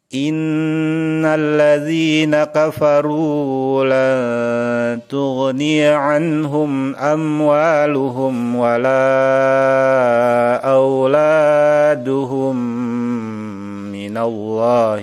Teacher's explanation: cara membaca Idgham Mutamatsilain adalah dengan berdengung dalam keadaan mulut tertutup